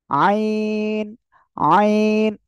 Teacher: দেখেন, এই যে আইন, এই আইন অক্ষরটা আমরা উচ্চারণ করব কোথা থেকে? হলক বলতে গলা, গলার মধ্যখান এভাবে রয়েছে, এই দুই পাশ থেকে হালকা চাপ হবে।